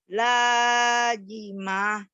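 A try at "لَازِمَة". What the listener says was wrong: Lazimah. Lazimah. Z. Tapi Z-nya rapuh. Bukan laji J. Ini lazimah Zai.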